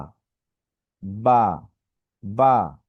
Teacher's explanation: বা, বা, বেশি টান হচ্ছে না, একদম অল্প টান।